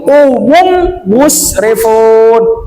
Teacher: mim yang kedua dikarenakan musaddah berarti nama hukumnya gunah. Cara pembacaannya maka ditahan.